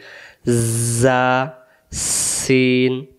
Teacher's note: জা অক্ষর বললে শীষ লাগে